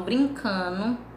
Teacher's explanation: eles deixam de falar, né, o NDO e falam apenas o NO